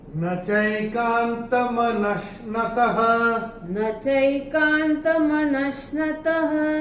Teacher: ये जो विसर्ग दिख रहा है चरण की समाप्ति पे, इसका उच्चारण केवल और केवल ह ही होगा।